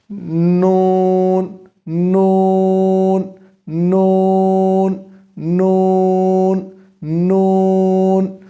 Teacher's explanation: طرف لسان انیاب سے لے کر ثنایا تک کے دانتوں کی جڑوں سے لگے